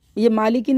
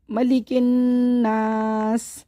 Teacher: ज़ेर ख़त्म हो जाएगा, सीन को साकिन कर देंगे। ये मालिकिन नहीं है, मलिकिन नास। मलिकिन जल्दी पढ़ना है